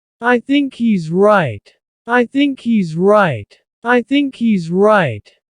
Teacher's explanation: There's no H happening here.